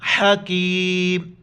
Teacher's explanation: ہا گلے سے ادا کریں گے، کاف چھوٹی کاف ہے باریک پڑھیں گے، حکیم، جب وقف کریں گے حکیم.